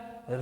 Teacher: जीभ सीधे होकर के हल्का मुड़ती है और मुड़ने के बाद जीभ में कंपन होता है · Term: मूर्धन्य